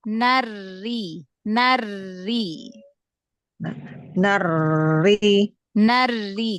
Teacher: Ee takrirnya dikurangkan. Tahan di makhraj huruf ro.